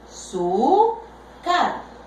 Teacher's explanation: Esta penúltima sílaba es la que será acentuada. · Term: graves